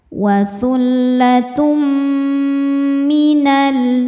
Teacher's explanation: Di sini ada hukum idgham bi gunnah karena ada tanwin dhammah yang menghadapi huruf mim. Cara bacanya tanwin dileburkan ke mim disertai bunyi dengung.